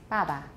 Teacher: It's unaspirated. An unaspirated, unvoiced, or voiceless initial stop bilabial.